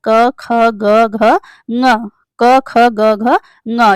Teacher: अ क वर्ग ह और विसर्ग जो है वह कंठ से बोला जाता है